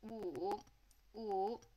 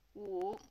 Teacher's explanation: Well, if you take that and kind of apply the third tone to it and go kind of like, ooh, and make it more of a woo sound